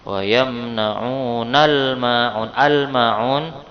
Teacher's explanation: Ya, alif lam qamariyah, karena lamnya juga terbaca.